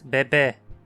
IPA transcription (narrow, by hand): be̞be̞